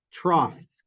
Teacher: the GH in IPA I'd write it with an F yeah that's the fricative